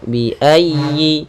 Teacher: tekan di huruf ya, bi ayyi, dan dikasrahkan dengan sempurna